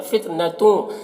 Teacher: تن کی تنوین میں اخفا اور تنوین کی آواز کو ناک میں چھپا کر پڑھیں گے